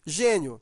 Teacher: Veja que esse i, ele é pronunciado fraco, ele está ao lado de uma vogal e ele tem um som de i. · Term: semivogal